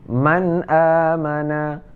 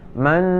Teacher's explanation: menyatakan ataupun membacakan bunyi nun mati ataupun baris dua dengan nyata, dan tiada berdengung. Kita baca bunyi nun mati tadi ataupun baris dua, ya, dengan nyata, dengan apa adanya, ya, sesuai dengan yang berdengung. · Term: idhar